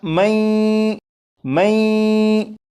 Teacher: یہ جو پڑھا میں، میں، یہاں پر غنہ بھی ہو رہا ہے، لیکن یہاں پر غنہ اس طرح سے نہیں کریں گے کہ زبان تالو سے لگا کر غنہ کریں، بلکہ یہاں پر غنہ اس طرح کریں گے کہ زبان تالو سے ہٹا کر غنہ کریں گے. جب زبان تالو سے ہٹا کر آپ غنہ کریں گے تو یہ درست پڑھا جائے گا، اور ان کے ہجے آپ یہاں سے بھی پڑھ سکتے ہیں.